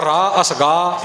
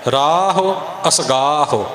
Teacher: ਇਹ ਹੋੜਾ ਬਣਾ ਕੇ ਰਾਹੋ ਅਸਗਾਹੋ ਨਹੀਂ ਬੋਲਣਾ, ਤੇ ਸਿੱਧਾ ਰਾਹ ਅਸਗਾਹ ਇੱਦਾਂ ਵੀ ਨਹੀਂ ਬੋਲਣਾ। ਰਾਹੋ ਅਸਗਾਹੋ ਇਉਂ ਥੋੜ੍ਹੀ ਥੋੜ੍ਹੀ ਔਂਕੜ ਦੀ ਮਾਤਰਾ ਬੋਲਣੀ ਹੈ